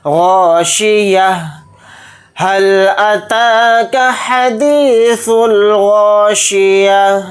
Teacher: وقف کریں گے تو تا کو ہا ساکن کی آواز بنا کر پڑھیں گے